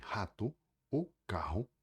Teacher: A letra R tem sons distintos nas duas línguas, principalmente no começo da palavra ou no R múltiplo, onde é mais forte e gutural